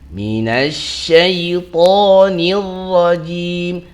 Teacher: nir itu juga masuknya ra tafkhim ataupun ra tebal. Jadi minasyaitonir rajim jangan rajim tapi rajim jim kasrah lagi ya.